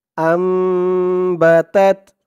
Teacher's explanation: নুনের উপরে দেখুন ছোট্ট একটা মিম আছে এই মিমকে ধরতে হবে এই মিমকে ধরে এখানে এক আলিফ পরিমাণ গুন্না করতে হবে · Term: ইকলাব গুন্নাহ